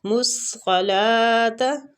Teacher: صاد جو ہے نا یہ بھی مستعلیہ حروف ہے، رخاوے کے ساتھ اس کو پڑھیں گے